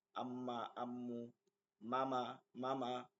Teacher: আমরা দেখেন মা বলি সামনের দিক জায়গাটা থেকে, আম্মা আম্মু মামা মামা, দুই ঠোঁটের শুকনা জায়গা হইতে মিম উচ্চারিত হয়